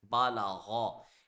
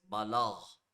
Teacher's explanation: If we stop, the zabar of ghain will turn into jazm and we will read it like this, balagh.